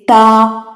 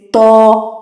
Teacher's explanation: یعنی یا تو کوئی حرف باریک ہے جیسے تا، یا کوئی حرف موٹا ہے جیسے تو